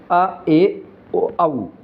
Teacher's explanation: अर्ध विवर्त स्वर ऐसे स्वर जिनके उच्चारण में मुख द्वार आधा खुलता है। अर्ध विवर्त स्वर कहलाते हैं।